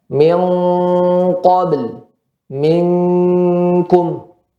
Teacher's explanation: Dan khusus pada huruf qaf dan kaf, ya, maka apabila ada tanwin atau nun sukun bertemu dengan huruf qaf dan kaf, maka dia dibaca eng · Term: ikhfa